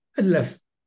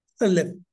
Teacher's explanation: Aleph is not a letter, but it's a glottal stop.